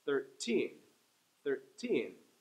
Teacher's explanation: With the number 13, 13, the teen gets the stress.